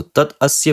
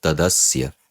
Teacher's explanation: change into its jash letter, that is into the third vyanjana of its varga. So, ta changes into da. So, tat asya becomes tadasya. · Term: jastva sandhi